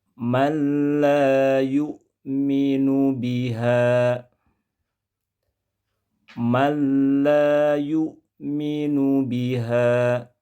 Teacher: Potongan ayat yang barusan saya baca tertulis dalam mushaf man la, namun kita baca menjadi mal la, ditulis man la, dibaca mal la. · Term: idgham bila gunnah